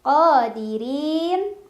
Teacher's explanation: Hardin qa mad tabi'i karena ada alif sebelumnya fathah, bacanya 2 harokat. Qadirin, ra dibaca secara tarqiq karena barisnya kasrah jadi dibaca tipis, lidahnya datar aja.